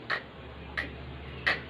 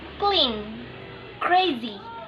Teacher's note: Sounds K is voiceless. If you want to make a sounds K, just say k, k, k.